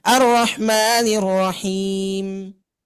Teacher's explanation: huruf mim yang akan kita dengungkan di akhir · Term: gunnah